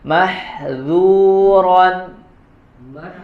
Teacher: huruf Dal ya tipis dibacanya jangan tebal